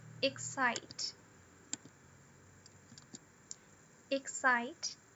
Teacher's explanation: a gente não tem o schwa na sílaba unstressed. A gente tem o som do e. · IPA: /ɪkˈsaɪt/